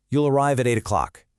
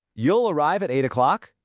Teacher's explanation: That simple rising melody at the end completely transformed the sentence from a statement into a question.